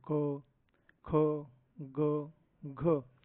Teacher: क च्या शेवटी उच्चारण करत असताना शेवटी कशाचा उच्चारण आपल्याला ऐकू येतो ध्वनी तर अ या स्वराचा ध्वनी आपल्याला ऐकण्यासाठी मिळत असतो